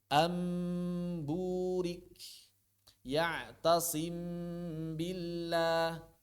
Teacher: Yaitu mengubah huruf nun atau tanwin, mengubah suara huruf nun atau tanwin menjadi huruf mim yang diikhfakan dan disertai gunnah